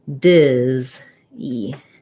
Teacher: z sound so z's so duh zees or d zees versus dizzy we have more length on that first dis so with the first syllable stress dizzy it sounds more like dis e um so same sounds